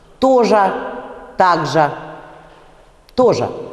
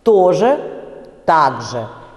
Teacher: Вот этот конечный звук – это звук «ер» с призвуком «ы». Именно призвук «ы» здесь очень важен.